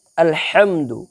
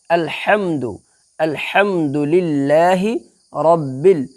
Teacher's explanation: یعنی وسط حلق کا درمیانی حصہ سے بڑی ہا نکلتا ہے۔ تو ہمیں یہاں پہ یہی والا نکالنا ہے۔